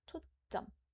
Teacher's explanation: when reading this, we put an emphasis on the second syllable, 점. So it sounds like 초 and 점.